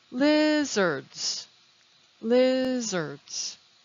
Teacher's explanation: Two syllables, the stress on the first syllable.